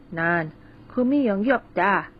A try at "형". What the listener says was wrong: Okay, it was good, but 형, we need a little bit more aspiration there.